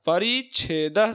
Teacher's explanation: परि में इकार जो है ह्रस्व है और छेद में छ जो है मिलने पर च का आगम हो जाता है तो परी छेद शब्द बन जाता है परिच्छेद शब्द बन जाता